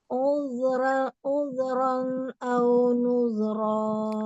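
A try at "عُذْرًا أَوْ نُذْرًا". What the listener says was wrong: Domah monyong lagi. Uzran au nuzra. alirkan.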